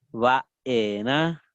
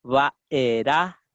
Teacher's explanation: con la A nasal y después con la A, o sea, que no sea nasalizada, con la A oral